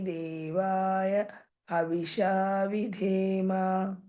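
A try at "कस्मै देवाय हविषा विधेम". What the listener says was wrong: ఇక్కడ య చెప్పలేదు మీరు య ఉంది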